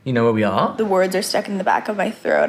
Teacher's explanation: The words are stuck in the back of my throat. I have like a vocal fry.